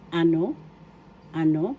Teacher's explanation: First syllable a, second syllable no. No has the accent.